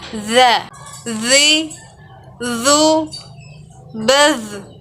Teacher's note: Cara melafalkan huruf za adalah menyentuhkan ujung lidah kita dengan dinding dua gigi seri bagian atas. Suara mengalir dengan lembut tanpa diiringi dengan mengalirnya udara.